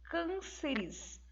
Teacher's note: nós vamos perceber que a sílaba tônica é a antepenúltima